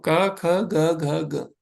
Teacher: यह सब एक ही स्थान से आ रहे हैं ना इसीलिए इनको कंठ बोला गया · तो का वर्ग में जो ध्वनि आती है उस कंठ से आती है। अगर आप बोलेंगे है ना, आप बोलते भी रहिए, तो आप देखेंगे एक विशेष भाग है कंठ, हमारे गले में, है ना। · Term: कंठ्य